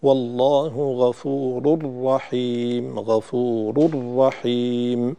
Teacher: تحتاج إلى زيادة التشديد في إدغام الراء، التنوين في الراء